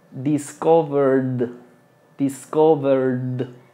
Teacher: Es como si nos brincásemos la e. Esta c es completamente muda.